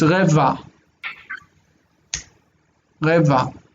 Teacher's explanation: This ah on the end, you don't really hear it when people speak. If it were Arabic, we would hear it, but in Hebrew it's dropped.